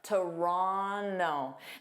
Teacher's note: I would pronounce that T most likely, but the first sound is always unstressed because it's the schwa.